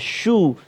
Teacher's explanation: bila kita sebut baris dhammah, muncung shu, dhammah kan, shu.